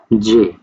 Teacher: হালকা একটা ধাক্কা যে উচ্চারণ হচ্ছে সেটা অ্যাফ্রিকেট